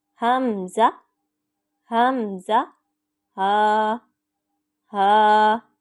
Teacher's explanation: حمزہ اور ہا، یہ 2 الفاظ ہیں جو حلق کے آخر سے ادا ہوتے ہیں۔ ان کو پڑھتے وقت ہماری آواز ہیوی ساؤنڈ ہوگی اور زور لگا کے پڑھیں گے۔